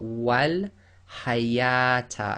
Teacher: So in that case, they've shown you that the wow is actually an alif and it's not pronounced as a wow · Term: alif written as a wow